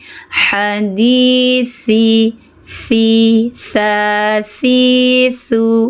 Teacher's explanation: Ujung lidah di tepi gigi seri atas.